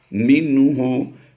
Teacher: نون ساکن کے بعد حروف ہلکی سے ہا آ گیا، تو یہاں پر اظہار کرتے ہوئے ہم نے پڑھنا ہے، یعنی غنہ نہیں کرنا